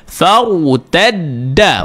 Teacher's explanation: Cuba buat fa, lepas tu kita bulat pada ra.